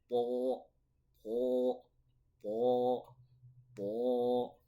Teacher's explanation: sifatnya itu tafkhim juga atau tebal karena pangkal lidahnya itu terangkat ke langit-langit maka dia menjadi berat